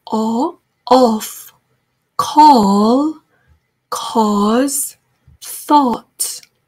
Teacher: 어, 우리나라 말에 어보다는 조금 더 깊은 소리가 나죠. 어, 쩍쩍 벌려주셔야 돼요. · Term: strawberry